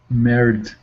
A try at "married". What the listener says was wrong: Married. Excellent. Well done.